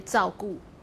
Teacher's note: people just say 照顾 without the retroflex